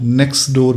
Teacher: यहाँ पे नेक्स्ट डोर एक वर्ड है, तो नेक्स्ट डोर जब हम कनेक्टेड स्पीच में बोलेंगे लगातारता में बोलेंगे तो नेक्स्ट डोर जो है वो नेक्स्ट डोर बन जाएगा। जो ट साउंड था नेक्स्ट में वो साउंड एलिसन उसका हो गया, वो गायब हो गया।